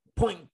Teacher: Hai môi mím lại, bật hơi ra các bạn ơi. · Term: âm P